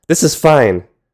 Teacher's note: If you sharply drop your pitch, that's an exclamation, usually conveying anger or impatience. "This is fine." Or you could end a sentence with a flat, low pitch throughout, like "this is fine," to kind of express hesitation or sadness.